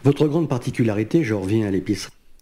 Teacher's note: he does close his mouth completely for the D sound because we have to hear that D as native speakers and native listeners.